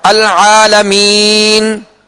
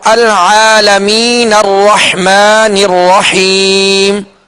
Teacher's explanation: اب اس کا سکون پڑھیں گے، جب ٹھہریں گے، وقف کریں گے، رکیں گے، اور جب ملا کر پڑھیں گے تو العالمین الرحمن الرحیم، اب یہ سکون ختم ہو گیا۔ اب نون کا سکون جو وقف میں پڑھا گیا تھا وہ وصل میں یعنی ملا کر پڑھنے کی صورت میں ختم ہو گیا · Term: سکون عارضی